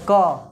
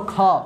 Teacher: क्या कहें कि प्रथम, तो क बोलो ख, तो क बोलते हैं उससे ज़्यादा उच्चारण में श्वास लेना पड़ता है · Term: महाप्राण